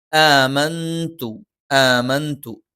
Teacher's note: സുക്കൂനുള്ള നൂനിന് ശേഷം താ വന്നു. സുക്കൂനുള്ള നൂനിന് ശേഷം താ വന്നാൽ അത് ഇഖ്ഫ ആണ്. നൂനിനെ അവ്യക്തമായി ഉച്ചരിക്കണം.